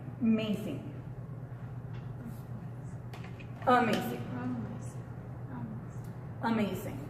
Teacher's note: No va a sonar amazing, va a sonar amazing. Casi como en español lo estaríamos viendo como si dijéramos como entre una U y una E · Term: sonido schwa